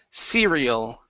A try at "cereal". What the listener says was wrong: Get that L sound. Cereal.